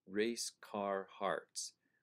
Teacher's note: the R sound is carried across all three of those words. Plus we have the R sound, A-R, is in car and it's in hearts.